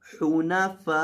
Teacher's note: यहाँ आपने फ़ा को लंबा करना है और 3 अलिफ के बराबर लंबा करना है क्योंकि इसके ऊपर मद्दे लाजिम आ रही है।